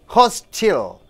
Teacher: Since hostel is a noun, the first syllable should be stressed.